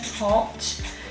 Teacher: So it's not front, it's back, it's open, hot, it's rounded.